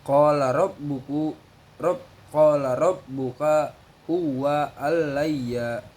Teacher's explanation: huruf ro dibaca tafkim sebab berharokat fathah